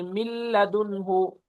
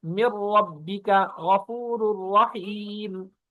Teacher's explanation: لام، را میں ادغام ہوگا، غنہ نہیں ہوگا، اور نون کی آواز بھی نہیں آئے گی